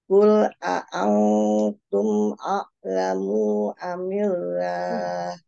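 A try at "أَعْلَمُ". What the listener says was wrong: A'lamu, mu-nya berapa? A'lamu. Satu. Jadi jangan panjangkan.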